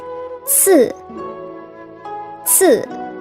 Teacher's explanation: The C initial is simply a TS sound you hear in the English words cats or Watson. In English, the TS always appears in the middle or at the end of words, whereas in Chinese, it appears in the beginning, like ci, ci, times.